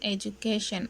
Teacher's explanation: In the word education, the primary stress falls on the third syllable.